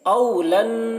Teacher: औलन यहाँ पर नून मुशद्दद है, यहाँ पर भी गुन्ना करेंगे। लाम को नून से मिलाकर पढ़ेंगे, या को नहीं पढ़ा जाएगा। यहाँ पर या में कोई हरकत नहीं है तो या को नहीं पढ़ेंगे।